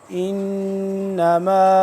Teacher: غنہ کریں گے نون تشدید کی وجہ سے